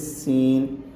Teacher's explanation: سین یہ سیٹی کی آواز سے پڑھا جائے گا دانتوں کو جوڑ کے۔